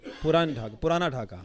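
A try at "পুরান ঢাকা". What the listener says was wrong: Purana in Urdu, but in Bangla it's Puran. Puran Dhaka. So we call it Puran Dhaka,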